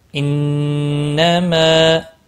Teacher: نون مشدد پر غنہ ہوگا، ایک الف کے برابر کھینچ کر پڑھیں گے